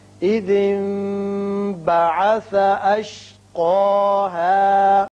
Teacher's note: یہاں نون ساکن کے بعد با آ رہا ہے، یہاں اقلاب ہوگا۔